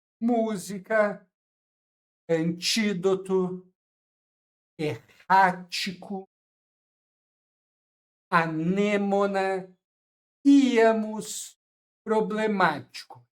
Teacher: Sempre se vocês contarem do fim pro início, vocês vão chegar a número três, ou seja, a antepenúltima sílaba tônica, tá? Quando for a antepenúltima sílaba tônica, né, contar três sílabas do fim pro início, isso quer dizer que ela é uma proparoxítona e aí ela deve ser acentuada por esta regra sempre, pessoal. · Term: proparoxítonas